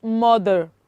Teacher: if letter r appears after a vowel sound and there is no other sound after it it will go silent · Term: silent letter r